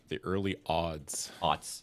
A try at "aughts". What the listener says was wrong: Aughts. With a T. And it's spelled with, like, every letter in the alphabet. It's not just, like, O-T. It's like A-U-G-H-T-S. Aughts.